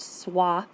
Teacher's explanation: you still hear the ah sound when you're putting that W in